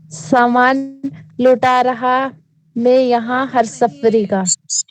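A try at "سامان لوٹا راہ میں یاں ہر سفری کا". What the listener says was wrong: رہا نہیں دیکھ کر پڑھیے، سامان لوٹا راہ میں یا ہر سفری کا، رہا نہیں راہ راہ راہ،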